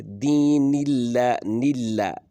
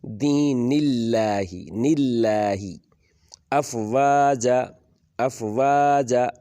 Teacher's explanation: یہاں پر اکثر لوگ اس کو بھی موٹا کر دیتے ہیں، جبکہ پیچھے یہ جو ترقیق کی آواز ہے یعنی پتلی آواز آنی چاہیے تھی، وہ پر کر کے تفخیم کر کے پڑھتے ہیں، موٹا کر کے پڑھ دیتے ہیں۔ ترقیق کر کے پڑھنا ہے، اللہ کو پتلا کر کے پڑھنا ہے